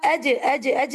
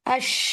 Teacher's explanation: सुभान अल्लाह, एक ही जगह से दोनों हर्फ अदा होते हैं, जीम और शीन. लेकिन जीम की अदायगी में रिलीज ऑफ एयर नहीं है, लेकिन शीन की अदायगी में एयर ही एयर है.